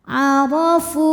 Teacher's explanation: huruf Dho dibunyikan secara tafkhim karena D berharakat fathah maka th dibunyikan dengan tebal